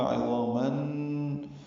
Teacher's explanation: عظامہ میں عین وسط حلق سے ادا ہوگا، ضا پر پڑھیں گے، الف مدہ ہے، دو حرکات لمبا ہے. تنوین کے بعد نون آنے کی وجہ سے ادغام ہوگا، عظاماً، اور یہ غنے کے ساتھ ہوگا